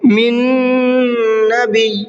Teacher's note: پہلا نون نہیں پڑھا جائے گا بلکہ دوسرا ہی نون پڑھا جائے گا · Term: ادغام نون